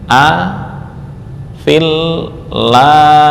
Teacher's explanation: Nah, kemudian alif ini juga enggak berharakat juga dibuang. Nah, ini fa langsung di masukkan ke lam